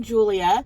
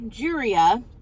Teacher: anything that would have L would have an R sound to it